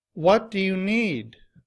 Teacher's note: the stress is placed on the word what and need. It's louder. It's longer. And the pitch of my voice is just a little bit higher.